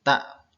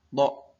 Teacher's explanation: Jelas kalau ta itu ya biasa saja, tipis. Kalau to lebih suaranya lebih bulat gitu ya.